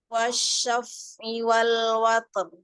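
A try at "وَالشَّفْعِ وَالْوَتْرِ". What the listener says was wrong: Ya, ro-nya sempurnakan masih kurang jelas huruf ro sukunnya di wakof.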